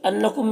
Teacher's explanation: نون مشدد غنہ ہوگا، میم میں اظہار شفوی ہو رہا